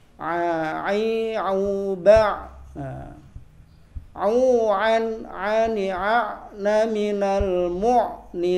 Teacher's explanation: Huruf ain itu membacanya harus di tengah-tengah tenggorokan. Berbeda dengan hamzah. Kalau hamzah itu di tenggorokan bagian bawah. Jadi sebagian itu ada yang baca ain itu malah hamzah.